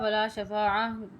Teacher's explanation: وقف ہوگا ولا شفاعہ، یہاں پہ گول تا آ رہی ہے، موٹا ہا کی آواز آپ نے یہاں پہ جو ہے نکال کے پڑھنا ہے، اس ہا ادا کرنی ہے، موٹی جو ہوتی ہے وہ والی ہا پڑھنی ہے آپ نے یہاں پہ۔